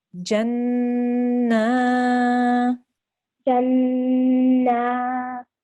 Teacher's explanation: we have to hold on the noon for 2 seconds, push down on it, make the guna sound, and then we have to elongate for 2 seconds because we have a vertical fatha here.